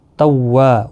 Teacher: و الف مدہ ہے، 1 الف کی مقدار کے برابر کھینچ کر پڑھیں گے